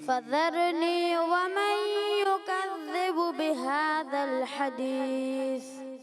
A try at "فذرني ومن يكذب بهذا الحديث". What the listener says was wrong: فذرنی میں را کو پر رکھنا ہے. فذرنی ومن يكذب بهذا الحديث.